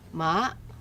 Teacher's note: Ma, high rising, mother.